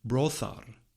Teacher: But Grimm's law tells us that the form should be fathar with a voiceless fricative in the middle, since in other Indo-European languages this consonant is a voiceless plosive.